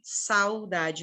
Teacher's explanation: Saudade, o U vai morrendo. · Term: ditongo